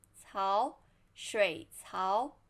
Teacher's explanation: first third tone 水 and then second tone 槽